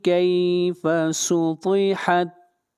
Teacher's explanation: ता हुरूफ इस्तिअला में से है, ता को मोटा पढ़ा जाएगा